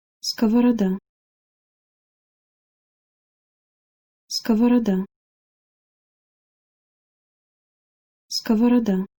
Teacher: This word is nice for English speakers because all of the consonants in it are hard. However, the main challenge when it comes to reading this word is that all the O vowels are pronounced in their shortened form because the accented syllable is the A at the end.